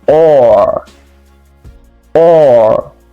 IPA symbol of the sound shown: ɔː